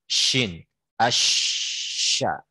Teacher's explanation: tersebarnya angin di mulut ya ketika mengucapkan huruf shin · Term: tafasyi